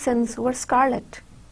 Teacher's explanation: the sibilance on the words sins and scarlet creates a hissing sound